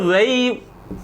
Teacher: वह का उच्चारण स्थान दंतोष्ठ होता है, वह बोला जाता है दंतोष्ठ से। वह को दंतोष्ठीय वर्ण कहा गया है, वह का उच्चारण स्थान केवल दंतोष्ठ होता है।